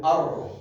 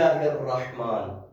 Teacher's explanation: جب را کو ادا کرتے ہیں ایک ارتعاش ہوتی ہے اس میں ار، دیکھیں جو زیادہ بھی نہیں کرنا آپ نے، ار نہیں، الرحمن، ٹھیک ہے، بسم اللہ الرحمن، تو یہ اس کے ساتھ مخصوص ہے.